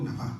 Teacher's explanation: Ahora vocalizo la N con la A y la Aleph final también con la A.